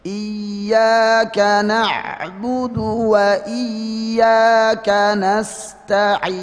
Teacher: Di kalimat iyyaka ya tasdid itu termasuk yang dianjurkan untuk ada nabr, namanya nabr itu suara diangkat ya.